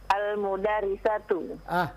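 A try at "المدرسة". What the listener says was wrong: Bukan Al-Mudarrisah. Lihat harokatnya.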